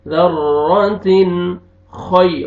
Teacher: خا کو موٹا کر کے پڑھنا ہے، یا لین ہے، خا کو مرزبر ہے، خا کو موٹا کر کے پڑھیں گے.